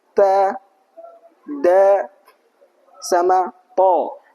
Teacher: huruf ta dal sama th itu makhrajnya ujung lidah menempel ke gigi seri atas